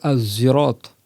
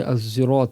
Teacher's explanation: le zay a un point de sortie proche du sin et du sad. C'est aussi le bout de la langue. Donc je dis Az-zirat avec un zay emphatique.